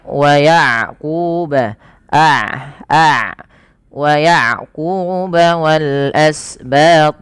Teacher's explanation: Syiddah itu mengalirnya suara, rokhawah itu syiddah itu tertahannya suara, rokhawah itu mengalirnya suara. Sehingga ketika melafalkan ain tidak terlalu dialirkan dan tidak terlalu ditahan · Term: sifat bainiyah